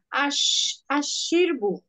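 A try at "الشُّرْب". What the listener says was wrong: শিরবু না আশুরবু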